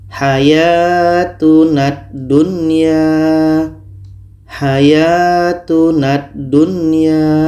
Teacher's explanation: ini adalah huruf alif lam syamsiah atau huruf Idgham Syamsiah maka lamnya ini kita tidak baca sedangkan na ini terus kita masukkan kepada da · Lam tidak kita baca lagi. Tapi bunyi na ini terus masuk ke dah. Kita masukkan secara sempurna kepada dah. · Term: idgam Kamil, idgham kamil